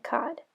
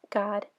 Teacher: Let's take a look at the pair of words God and cod. They are both velar stops, just one is voiceless and one is voiced. This is a difficult distinction for emergent readers to say because g and k are so similar.